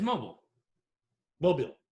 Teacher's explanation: So they get that accent is on the mo, not the beal.